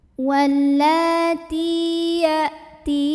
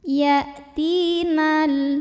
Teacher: Wallati ya'ti, ti mad tabi'i karena ada ya sukun yang didahului baris kasrah. Cara membacanya dipanjangkan taknya dua harokat saja.